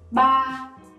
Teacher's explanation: This one has no tone, so you have to keep it stable and high.